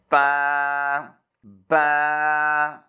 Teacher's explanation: होंठों के तरी वाले हिस्से से ज़ोर से दबा के पढ़ेंगे इसको